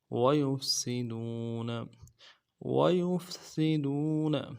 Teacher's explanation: سین کی سیٹی باریک ہوگی، ویفسی، اور دال کو واو کے ساتھ ملانا ہے، واو مدہ ہے، ایک الف دال میں کھینچیں گے، نون کے زبر کو نرم سے ادا کریں گے۔